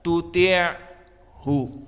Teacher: Maka ain di sini sifatnya atau makhrajnya adalah wastul halq dan sifatnya dia jahr. Maka makna jahr tidak keluar nafas sama sekali.